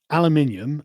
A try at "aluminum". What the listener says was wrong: Where do you get the I in aluminium? No, the second one.